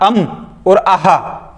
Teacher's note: तो अनुनासिक, जब भी आप अम और आहा बोलोगे तो आपके नाक और मुंह दोनों से ध्वनि निकलेगी